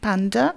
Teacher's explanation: dans panda, la première syllabe est plus forte que la deuxième. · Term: accent lexical